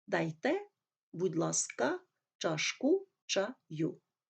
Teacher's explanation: знаючи те що в французькій мові наголос падає на останній склад так вимовляв би і українські слова